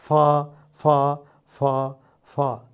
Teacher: എൻ്റെ താഴത്തെ ചുണ്ട് മേൽവരി പല്ലിൻ്റെ അടുക്കൽ വന്ന് നിൽക്കുന്നു, എന്നിട്ട് തമ്മിലുള്ള വിടവിൽ കൂടി വായു പുറത്തേക്ക് വരുന്നു. അങ്ങനെയാണ് നമ്മൾ ഫ ഉച്ചരിക്കുന്നത്. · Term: ഫ എന്ന ഫ്രിക്കറ്റീവ്